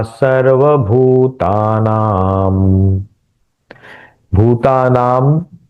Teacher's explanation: अनुस्वार का उच्चारण आगे म है इसलिए म के तरह ही किया है